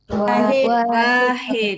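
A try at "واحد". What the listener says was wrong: Bukan wahid, bukan wahid, bukan wa-nya panjang. Wahid.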